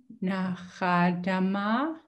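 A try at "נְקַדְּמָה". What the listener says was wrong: Ka. It's a k sound. I thought I heard a ch, but say that again.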